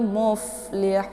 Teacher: bagian dalam berjumpa dengan ujung gigi seri bagian atas ya move ada bunyi desis anginnya dibaca pendek · tapi move karena posisi huruf H di sini dia posisinya yaitu bibir bawah bagian dalam berjumpa dengan ujung gigi seri bagian atas ya move ada bunyi desis anginnya